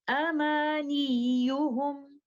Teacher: By making it clear to the listener that there is no lengthening, we put pressure on the letter ya, and that pressure will cut short its time and therefore avoid the possibility of lengthening it. And by doing nabar on letter ya, this is how we will recite it.